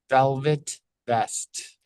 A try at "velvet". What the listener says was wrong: Velvet is a little bit tricky. Try to get that L to flick a little bit faster.